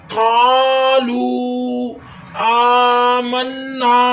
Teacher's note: قالو، لو پہ مد بھی ہے اور واو مدہ بھی ہو رہا ہے، ڈبل لمبا ہوگا، واو ساکن اس سے پہلے پیش واو مدہ۔ قالو آمنا، نون مشدد ہے، نون پر گنہ کرنا ہے اور الف مدہ وقفے جائز کی علامت ہے۔